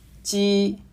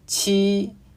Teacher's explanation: 鸡是不送气清音，七是送气清音